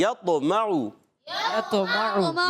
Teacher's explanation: قلقلہ بھی ہوگا, آواز لوٹ کر بھی آئے گی